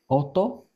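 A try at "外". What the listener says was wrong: This is soto. So you got the S right first time, and the second time you got the O right. But you had to combine the two together. Soto.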